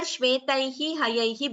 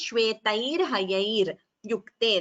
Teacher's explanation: Here shvetaihi hayaihi becomes shvetair hayair yukte. That is visarga refa sandhi.